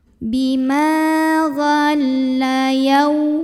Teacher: Ma mad tabi'i karena ada alif yang didahului baris fathah. Maka cara membunyikannya dipanjangkan mimnya 2 harokat.